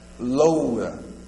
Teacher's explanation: o o passa rápido sempre a vogal mais fraca vai ser a semivogal